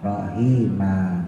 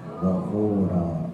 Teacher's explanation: Panjangnya 2 harokat. Nggak boleh 4, nggak boleh 6 ya. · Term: mat iwat